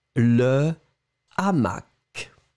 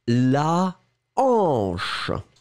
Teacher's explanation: avec le H aspiré, il n'y a pas d'élision et il n'y a pas de liaison. Donc, les articles restent intacts, le, la, et vous n'allez pas faire de liaison si c'est au pluriel avec le S, d'accord ?